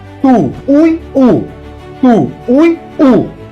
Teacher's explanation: Veja que a sílaba tônica é a última, então a palavra é oxítona. O é tônico, formou hiato com o ditongo anterior e está sozinho na sílaba.